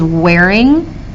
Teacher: Ing tends to be unstressed, and wear tends to be stressed.